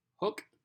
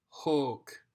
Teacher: long sound twice as long as you would hold it so the difference between nominative neuter hook and ablative neuter hulk just kind of hold it out twice as far